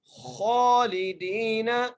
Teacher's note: خا کے اوپر کھڑی زبر ہے، ایک الف مقدار کھینچ کے پڑھیں گے ، لام کے نیچے زیر ہے، دال کو یا سے ملائیں